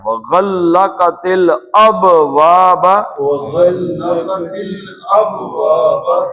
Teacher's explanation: پہلے با کیونکہ ساکن ہے تو اس کا قلقلہ ہے